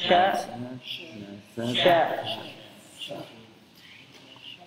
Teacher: Di lidah bagian ya bagian tengah atau punggung nempel ke langit-langit atas · At-tafasyi, ya, ada tersebarnya udara di dalam mulut